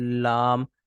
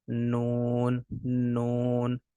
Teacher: उसके बाद लाम को अदा करें तो आपको पता लग जाएगा लाम में जो है वह आपकी जबान ज्यादा जो है वह लग रही है और नून में आपकी जुबान जो है वह उससे कम लग रही है